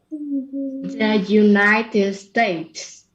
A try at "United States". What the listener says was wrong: Yeah, you got to remember those N's, right? They're not L's. It's not united. It's united. United States.